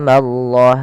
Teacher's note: Pada lafal Allah bila didahului dengan fathah maka Allahnya tebal. Wa mallah, tapi ma jangan ikut tebal.